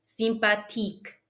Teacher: there's no TH sound in French, so we just pronounce the T